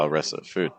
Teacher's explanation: That th on the could be very, very weak if you want it to be.